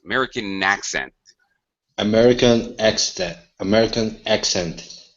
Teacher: Notice the second word. It sounds like it begins with the N. So it sounds like it starts with the N here.